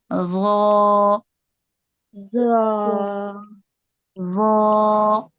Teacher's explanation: উপরের দুই দাঁতের আগার সঙ্গে লাগবে, নরম আওয়াজ হবে